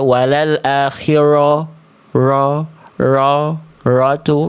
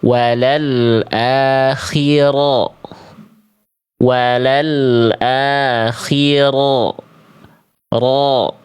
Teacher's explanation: Dia bergetar tapi tidak berlebihan dan dia tidak monyong.